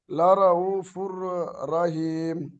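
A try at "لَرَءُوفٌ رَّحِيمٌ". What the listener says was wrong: দেখেন রাউফুর নয়, র জাবার র, র এর উপরে জাবার আসলে কি হয়? র পুর করে পড়তে হয় জাবার অথবা পেশ আসলে। লা রাউফুর রহিম।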